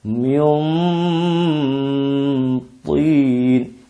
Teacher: Mintin tidak Min sehingga ghunahnya itu tidak ikut-ikut tebal juga ghunahnya gunahnya tidak sembarang gunah tapi juga ikut terpengaruh oleh sifat kuatnya tho itu